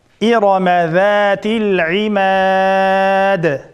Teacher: İrama ra zabar bo'lganlik uchun cho'ng o'qildi.